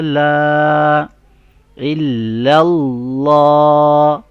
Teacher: اللہ کا جو نام ہے اس کو ہم موٹا پڑھ رہے ہیں، بولڈ ساؤنڈ کر رہے ہیں